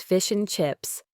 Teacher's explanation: Very often you'll hear it as fish and chips, where the D sound in and simply disappears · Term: elision